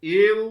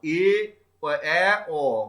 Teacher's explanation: এ ও উচ্চারণ করতে গিয়ে আমাদের মুখবিবরটা যতটা শূন্য ছিল, আর এ অ উচ্চারণ করতে গিয়ে আমাদের মুখবিবরটা আরো বেশি ফাঁকা হয়ে যাচ্ছে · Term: অর্ধ বিবৃত স্বরধ্বনি